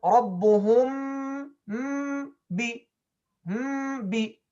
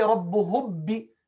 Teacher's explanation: The meme is still there and it's distinct from the ba, means you can hear it distinct. That's how the ikhfa is similar to idhar.